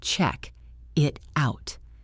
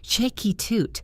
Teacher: It sounds like chick out or check it out. The K sound at the end of check attaches to the it, and the T at the end of it attaches to the out. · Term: linking